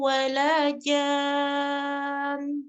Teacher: Ya, dia sebenarnya naber tapi naber juga tidak boleh berlebihan juga ya. Yang penting itu nunnya karena dia bertasdid jadi walaupun disukunkan dia tetap harus dighenahkan, tetap nampak ghenahnya.